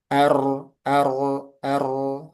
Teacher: ro itu punya sifat takrir. Nah, takrir itu ee dia ada getaran satu sampai dua kali